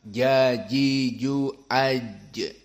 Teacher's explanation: jim dalam keadaan musyaddadah dan makhrajnya dari wastul lisan